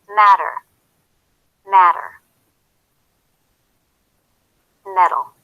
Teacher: actually sounds just like this pair of homophones metal because of the flap T which comes between vowel sounds and sounds just like the D between vowel sounds